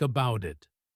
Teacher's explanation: In American English especially, the T in about changes. It becomes a soft flap sound almost like a quick D because it is between vowel sounds when we link it to the word it. So it sounds like about it.